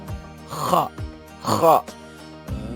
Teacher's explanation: Kalau huruf ha itu pelafalannya lebih lembut ya, ha, ha. Kalau kho itu lebih lebih kasar, seperti kita mau membuang sesuatu dari leher tenggorokan.